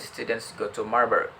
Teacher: shows the stress timing in English, with the stress syllables to and ma noticeably longer and more prominent